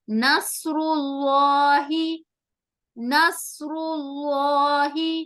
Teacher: موٹا کرتے ہوئے، ہیوی آواز کے ساتھ ہمیں اسے ادا کرنا ہوتا ہے لام کو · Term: لام جلالہ